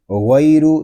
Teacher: یہاں را کو بھی پر پڑھیں گے کیونکہ را کے اوپر پیش آ گیا ہے۔ غین اور را دونوں حروف پر ہوں گے۔